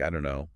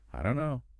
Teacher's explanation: the vowel sound in don't, the O sound often weakens, becoming less distinct. So the whole phrase commonly comes out as something like, I don't know. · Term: reduction